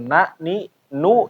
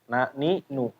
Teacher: kalau nun dalam bahasa Arab mau keadaannya na ni nu ya nu juga enggak boleh tebal ya tetap tipis